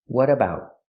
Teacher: We hear the T in what pronounced as a fast D because it's between vowels.